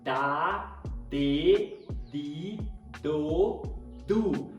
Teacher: dedido do com a pontinha da língua tocando atrás desses dentes por isso a gente fala que o d no português ele é dental porque é dental porque o ápice a ponta da língua toca atrás dos dentes · quando a gente fala ao fonema d a ponta da sua língua toca atrás do dente superior então a gente fala da dedido do com a pontinha da